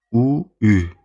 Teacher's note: Ardınca u ü dedikdə dilin önə gəldiyini hiss eləyirsiz. Bu öndə yaranan saitdir. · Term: dil önü